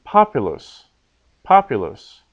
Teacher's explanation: the second last syllable is short so the accent is on the third last syllable